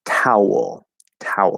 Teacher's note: you could say there's sort of like a little schwa and an l there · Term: dark l